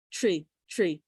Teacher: interestingly enough tree has almost like a ch sound to it